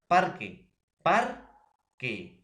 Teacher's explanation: Por ejemplo, profesor, yo puedo decir parque, parque. Entonces, la sílaba par, profesor, es la que tiene mayor acento, es la que tiene mayor fuerza de voz. A eso le vamos a llamar acento.